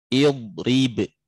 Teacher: Yang pertama ra al-maksurah, ra di kasrah dia tipis.